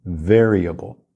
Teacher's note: na pronúncia de variable ou a força tônica é na primeira sílaba